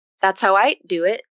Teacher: And then this sentence here is the one that has the devoiced D that turns into a T consonant